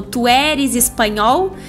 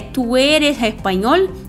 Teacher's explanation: Às vezes tem o S que sai um som meio aspirado, parecido com R, mas se falar "tu eres español" também não tem problema nenhum, porém o E e o O são mais fechados, não são abertos que nem no português